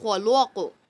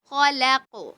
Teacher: اب کچھ بچے کیا کرتے ہیں، پڑھتے ہوئے لام کو بھی موٹا کرتے ہیں، کیونکہ خا بھی موٹا، قاف بھی موٹا، بیچ میں لام پتلا آ گیا، تو کیا کرتے ہیں، لام کو پڑھتے ہیں خلق، اس طرح نہیں کریں گے، لام کو ساتھ میں موٹا نہیں کرنا